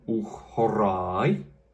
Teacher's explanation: And in this sentence, we had the word uch used because the next word, horai, begins in a vowel with a rough breathing. And so that aspiration that's contained within the rough breathing, that sound, spreads onto what would ordinarily be uk. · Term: aspirated consonant